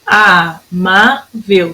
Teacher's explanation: São 3 sílabas. Amável, a minha sílaba tônica é o má.